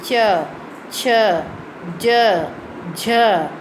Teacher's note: अब तालु से आवाज़ आएगी